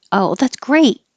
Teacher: If you just say the word great, it'll sound like gray because the T won't be heard. You'll hold the T position.